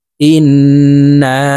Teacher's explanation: তো আমরা এই নুনকে তিন আলিফ টেনে পড়বো · ইন্না, ইন এখানে ওয়াজিব গুন্না, হারকতের বামে নুনের উপরে তাসদিদ আছে। তো এই হামজা তাসদিদওয়ালা নুনের সাথে নাকের বাসি থেকে গুন্নাহ করে পড়ব। তারপরে এই নুনকে 3 আলিফ টেনে পড়ব, কারণ মদের হারফের উপরে চিকন চিহ্ন বামে হামজা, মধ্যে মুনফাসিল 3 আলিফ টেনিয়া পড়িতে হয়।